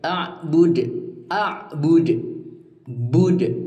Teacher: Ini adalah qalqalah kubro karena dipaksa dimatikan di akhir kalimat.